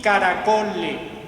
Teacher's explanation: No aparece esa S al final, aparece esa S como pérdida.